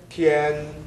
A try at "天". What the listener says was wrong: T에서 I가 빠졌어요. 텐 이래서 天